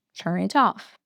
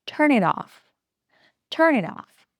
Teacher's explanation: When a word ends in a consonant sound and the next word starts with a vowel sound, they link together. The last sound of the first word moves to the beginning of the next word. Like this, turn it off. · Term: linking